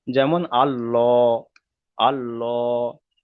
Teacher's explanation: আল্লাহ শব্দটাকে পুর করে পড়তে হবে, অর্থাৎ ল করে পড়তে হবে, ল। যেমন আল্লাহ, আল্লাহ।